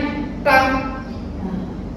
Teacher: Kalau nggak tepat sandarannya, agak ke belakang ke tempat sandarannya lam, bunyinya ta.